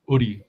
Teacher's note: it has to start with a glottal stop